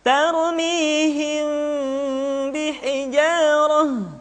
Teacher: Maka pada tahapan ini, mim mati bertemu dengan ba bukan saja mesti ditahan dan dimasukkan ke rongga hidung, akan tetapi mim mati bertemu dengan ba mesti dibaca dengan sempurna. Caranya, kita baca mim dengan suara yang samar. Caranya, kedua bibir kita direnggangkan, tidak sampai rapat secara sempurna. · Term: ikhfa syafawi